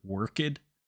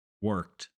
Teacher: a lot of people will accidentally pronounce this word worked with a D sound